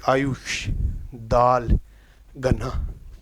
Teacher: और अवृत्तमुखी आपको बता ही दिया कि बोलते वक्त हमारे जो होठों का आकार क्या है? एक वृत्त के रूप में ना होकर फैलाव के रूप में इस कारण अवृत्तमुखी है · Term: अवृत मुखी